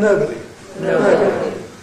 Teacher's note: all the Nuclear Tones in the first five are Falling.